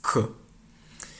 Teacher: There's no puff of air that comes out of the mouth. It's K. You can practice doing this by putting a piece of paper on the back of your hand.